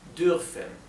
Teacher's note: la r alemana es gutural con la parte de bien atrás de la garganta abajo